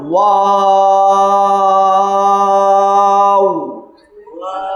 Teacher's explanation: দুইবার ঠোঁট গোল হবে, প্রথমে একবার, শেষে একবার।